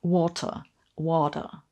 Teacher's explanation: you hear that the British use or, where the Americans use a sound that's closer to an er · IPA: ɔː